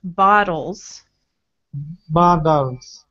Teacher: we have a voiced sound before and after bottles, so the T turns into a D.